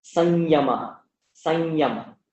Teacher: But if it precedes ya, then remember the place in the mouth that these letters are made. Ya is made in the talu, and so you get the talu version of the anuswara, which is ya, so it'll become something like sanyama, sanyama, that kind of thing.